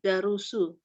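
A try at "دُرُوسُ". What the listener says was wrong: Ini Ibu yakin tidak bahwa dalnya ini dibaca fathah? Yakin kan? Yakin tidak?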